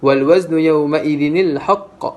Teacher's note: kita perlu tukarkan tanwin itu kepada huruf nun yang berbaris di bawah.